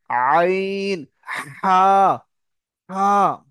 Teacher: কণ্ঠনালীর মাঝখান দিয়ে আইন এবং বড় হা, আইন, গলার মাঝখান দিয়ে, গলা চেপে হবে